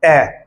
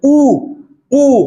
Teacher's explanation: जिसके उच्चारण में होठ गोल हो जाते हैं, वो क्या है? वृत्तमुखी।